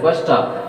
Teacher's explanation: So that bus stop, there are two syllables, so that stress is on their first syllable. And here, irrespective of kinds of syllables, if it is a compound word, there stress is on first syllable.